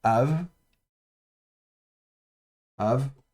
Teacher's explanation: le bet ici est fricatif, spirant, il n'y a pas de dagesh · Donc ici, on a lef avec le camet et donc ça se prononcera à donc le bête ici est fricatif spirant, il y a pas de dag et donc ça c'est ave av et c'est paire.